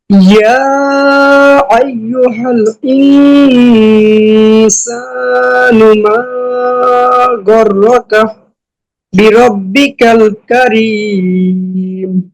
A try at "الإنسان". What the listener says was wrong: এই যে এখানে একটু মোটা হয়ে যাচ্ছে, হামজা শক্ত হবে এবং পাতলা হবে। ইয়া আইয়ুহাল ইনসানু।